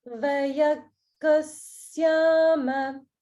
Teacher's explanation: because of the sound combination that's directly following it, the sya sound, it turns into a double g sound